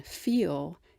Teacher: la but at the end of a syllable like in feel it's a dark L or more of the body of the tongue is raised and it sounds less clear darker